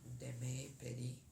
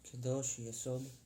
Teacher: the shva that we have is a longer shva, shva na, and that is because it's at the beginning of The word.